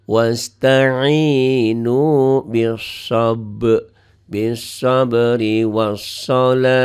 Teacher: Ta'nya tak marbutoh, bunyinya jadi ha. Wasta'inu bis-sabri was-shalah.